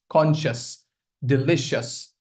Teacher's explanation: all these words that end in c i o u s. Most of them you do not say she it's sh. That's it. Just sh.